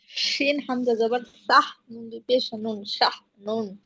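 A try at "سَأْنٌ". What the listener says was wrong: শাহ হয়ে যাচ্ছে তো, হামজাটা উচ্চারণ করতে হবে, এখানে হা না তো, হামজা সা। সিন হামজা জবর সা, নুন দুই পেশ নুন, সা নুন।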